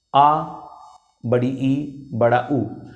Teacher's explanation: वे स्वर जिन्हें बोलने में दुगुना समय लगे अर्थात 2 मात्रा का समय लगे, वो द्विमात्रिक स्वर कहलाते हैं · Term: दीर्घ स्वर